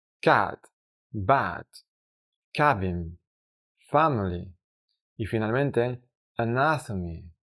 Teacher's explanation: como si existiese una vocal en español que empieza en el sonido de la letra A y termina en el sonido de la letra E. Pero es una sola vocal.